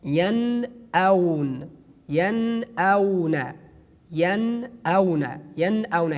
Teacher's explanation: Here we have noon, which is sakin, and after noon we have alif or hamza, that we pronounce the noon frankly.